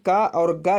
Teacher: का और गा जो है अल्प प्राण है